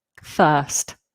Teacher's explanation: We don't pronounce the R. The IR makes up the vowel sound. First. So if you can ignore that R, get that long, lazy vowel, then that'll be nice and easy for you.